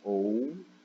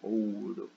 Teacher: Ao contrário do crescente. Ele vai descendo em força, né? A gente vem primeiro o som mais forte, que é a vogal, né? Ou, o, depois o U, né? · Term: ditongo decrescente